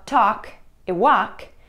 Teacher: в словах talk и walk мы не произносим букву L. Если вы опустите L, ваш голос будет звучать намного лучше.